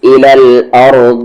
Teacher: را ہیوی اور ضاد تو ہیوی ہوتا ہی ہے